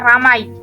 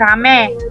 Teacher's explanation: Perubahan ini terjadi pada bunyi vokal rangkap ai ke vokal tunggal e. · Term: monoftonisasi